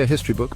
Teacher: is silent and the word starts with a vowel sound however we say a history book because the H in history is pronounced